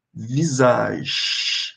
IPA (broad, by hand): vizaʒ